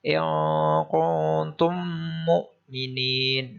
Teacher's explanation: pada huruf mim mati dengan mim domah itu ditekan 1,5 ketukan · wajib dibaca dengan dengung panjang bacaannya adalah satu setengah ketukan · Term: idgham mimi